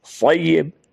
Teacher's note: قوف دو نقطے والا وہ پور ہو کے نکلتا ہے اور یہ سمپل۔ صیب، صاد کو پور پڑھنا ہے اور زور دینا ہے یا پر